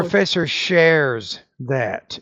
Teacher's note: it's a third person present singular S ending, and you want to pronounce that as a Z